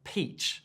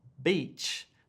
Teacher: when making the per sound as in peach like the fruit you push the air out whereas when you make the sound as in beach there is less air being pushed out